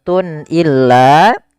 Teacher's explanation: Kemudian pada lafal tun illa di sini ada izhar halqi yaitu suara tanwinnya harus dibaca dengan jelas karena ketemu dengan huruf hamzah